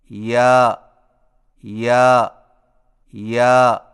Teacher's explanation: یا کی ادائیگی میں زبان کے درمیان کو تالو کی طرف بلند کرتے ہوئے باریک آواز میں پڑھیں